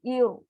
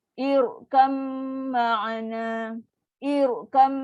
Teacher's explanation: Selepas hamzah wasal, bila ada ra sukun, ra tu akan jadi tebal. Jangan baca irkam ma'ana, ir. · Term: ra tafkim